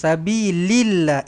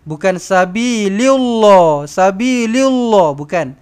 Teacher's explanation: Lafzul jalalah ini kena baca dengan tarqiq, kena baca dengan nipis kerana huruf sebelumnya berbaris bawah.